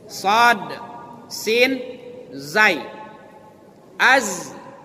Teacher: Makhrajnya di ujung lidah bertemu dengan tempat tumbuh gigi seri bawah.